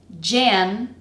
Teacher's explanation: So the first syllable, which is the strongest one, is pronounced j, j, n. So we have a j consonant sound, the nasal version of a, and then an n.